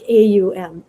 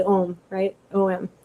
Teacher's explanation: when they say it in sanskrit it sounds like three separate syllables blended into one